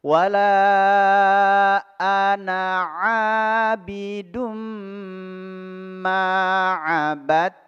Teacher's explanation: huruf ainnya di sini baris fathah bertemu dengan alif. Mad tabi'i dibaca 2 harokat.